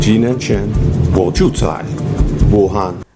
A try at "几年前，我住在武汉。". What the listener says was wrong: 住在 在 is not accurate.